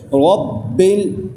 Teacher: آگے را ہے، را کو قاعدہ بھی آپ سمجھ لیجئے، جب را کے اوپر زبر یا پیش ہو تو را موٹی کر کے پڑھی جاتی ہے، اور را کے نیچے زیر آ جائے تو را باریک پڑھی جاتی ہے۔ اب را کے اوپر اس وقت زبر ہے تو ہم را کو موٹا کر کے پڑھیں گے